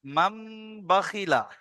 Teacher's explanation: নুন সাকিনকে এক আলিফ পরিমাণ গুণা করি পড়তে হয়। নুন সাকিনকে মিমের দ্বারা পরিবর্তন করে মিমের দ্বারা পরিবর্তন করে এক আলিফ গুণা করি পড়তে হয়। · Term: ইকলাব